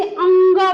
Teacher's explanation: इसका जब हम उच्चारण करते हैं तो इसका उच्चारण होता है मुख से और नाक से। अनु यानी मुख नासिक यानी नाक। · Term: पंचमाक्षर